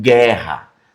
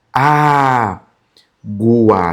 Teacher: O gu aqui já aparece o som do u.